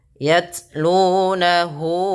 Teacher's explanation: baca taknya itu dengan sifat jaharnya dulu, tertahannya suara, baru ke hamasnya.